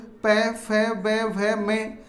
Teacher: और इन वर्णों को ओष्ठ वर्ण कहते हैं क्योंकि ऊ पै फै बै भै में का उच्चारण करते समय होठों से इनको बोला जाता है